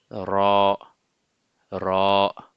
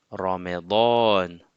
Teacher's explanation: le bout de la langue, pour la sortie de la lettre, le bout de la langue se colle au palais supérieur. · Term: la lettre Ra